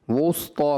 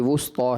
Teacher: سین کے بعد پر حرف آ رہا ہے تو مجھے لگا کہ شاید پر حرف کی وجہ سے سین بھی آپ نے پر کر دیا، وسطیٰ ہو گیا۔